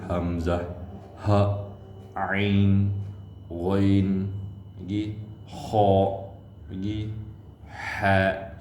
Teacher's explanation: Dinamakan halki kerana semua huruf izhar halki tempat keluarnya daripada halkum, bunyi dekat halkum